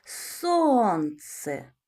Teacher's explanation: Правильно звук С. Він твердий, приголосний.